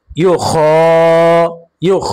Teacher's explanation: খ এর উপরে খারা জবর আসার কারণে এক আলিফ টান হবে মাদ্দে তবাই।